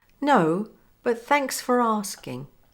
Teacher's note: notice the linking here for becomes fur with a linking R to R in asking